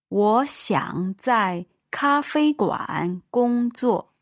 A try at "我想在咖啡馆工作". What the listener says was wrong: 我想在咖啡馆工作. Wrong tones there at the end. 我想在咖啡馆工作.